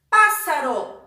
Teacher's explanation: a sílaba mais forte é a antepenúltima, então ela é uma proparoxítona